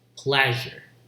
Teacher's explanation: This is post-alveolar, voiced post-alveolar fricative.